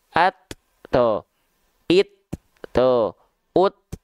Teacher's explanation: kalau huruf ta Dalam kondisi sukun bunyi percikan nafasnya lebih terasa